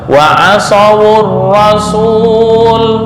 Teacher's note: Dibaca harokat penolong dhammah pada wawu menjadi wa asawur rasul